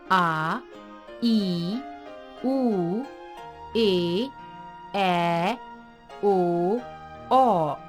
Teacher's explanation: जिन स्वरों के उच्चारण में ह्रस्व स्वर से 2 गुना समय लगता है वे दीर्घ स्वर कहलाते हैं